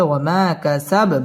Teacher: আলিফ মদের হরফ এক আলিফ টেনে পড়তে হবে ওয়া মা কাসাব বায়ের মধ্যে সাকিন করে ওয়াকফ করতে হবে